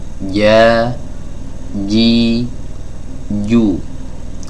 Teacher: Di sini dijelaskan min wasatil lisani ma'a wasatil hanakil a'la. Ya, dari lidah bagian tengah bertemu dengan langit-langit atas bagian tengah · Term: huruf jim